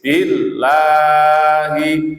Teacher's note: Lafaz jalalah setelah kasrah dibaca tipis